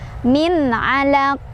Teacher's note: Jadi sukunnya bukan sukun asli. Jadi cara bacanya pantul dan pantulannya besar. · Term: qalqalah kubro